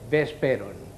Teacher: O sigui, hem de dir vesperon, no vesperon, V, amb les dents, vesperon, labial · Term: V baixa